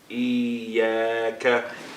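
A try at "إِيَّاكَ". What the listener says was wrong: Iyaka. Iyaka. Iyaka. Iyaka. I want to hear the shadda. Iyaka. Iyaka. Two counts for each mad. This is a mad, two counts for it.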